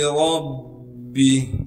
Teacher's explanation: اس را کو موٹا کر کے پڑھیں گے کیونکہ را پر زبر ہے